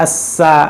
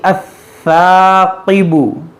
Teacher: ثا میں سیٹی کی آواز نہ آنے دیں